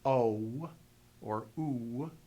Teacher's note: the historic W sound so when we say o or o you can hear the W sound that was at the end of that vowel that led them to use VAV as a vowel marker in